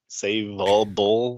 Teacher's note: it's a front vowel followed by a round vowel.